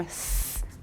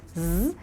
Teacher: Puis c'est ça qui va faire la différence, par exemple, entre un S puis un Z, où le S, les cordes vocales ne vibrent pas, et le Z, la bouche est placée exactement pareil, mais les cordes vocales vibrent